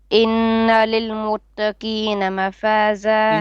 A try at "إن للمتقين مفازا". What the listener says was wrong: إن للمتقين قاف للمتقين. No, you made the ta heavy. You said muttaqina. No. Muttaqi. Taqi.